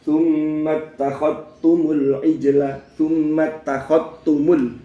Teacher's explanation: Tapi dalam riwayat Syu'bah biidghamil zal fitta, idghaman kamilan. Idgham kamil itu idgham sempurna. Zalnya lebur ke ta.